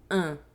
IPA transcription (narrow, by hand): ɛ̃